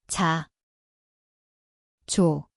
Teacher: Ia berbunyi seperti J, tempatnya adalah gusi langit, Afrikat. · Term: 지읒